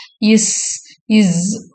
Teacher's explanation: The sound இஸ் made by narrowing the space between the tongue and the அல்வலார் ரெட்ஜ் அந்த நுனி நாக்கு அல்வலார் ரெட்ஜ் கிட்ட வரும் அல்வலார் ரெட்ஜ்னா just behind · the sound is made by narrowing the space between the tongue and the alveolar ridge. அந்த நுனி நாக்கு alveolar ridge கிட்ட வரும். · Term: அல்வெல்லார் பிரிகேட்டிவ்ஸ், alveolar fricatives